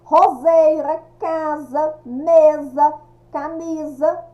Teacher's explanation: palavras que são escritas com s mas tem um som de z